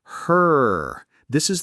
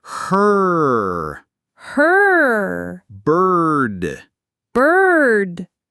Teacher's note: The sound as in her. This is the pure tense R sound acting as the vowel.